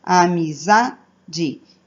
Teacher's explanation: eu falo zá mais forte do que as outras sílabas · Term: paroxítonas